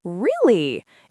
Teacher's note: you go up really, it shows excitement.